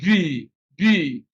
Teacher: you can see that when you pronounce b there is a vibration